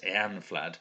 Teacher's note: I think you're supposed to stress the first syllable.